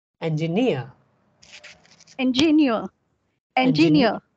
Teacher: So here near is stressed, right?